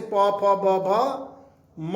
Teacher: इसमें ए आए, त थ द ध न, ल और स, एतलस। उसके बाद पवर्ग आता है, तो इसमें 5 अक्षर पहले से प फ ब भ म, ये ओठ से बोले जाते हैं